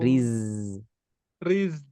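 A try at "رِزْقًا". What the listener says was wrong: Ya, jangan pakai nafas. Riz. Riz.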